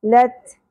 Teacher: ता को पुर नहीं करना, ता बारीक अदा होगा।